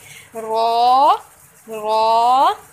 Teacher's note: जब हम रॉ पढ़ते हैं तो ऑटोमेटिकली हमारी ज़ुबान जो है वो सामने वाले 4 टीथ्स के गम्स को टच करती है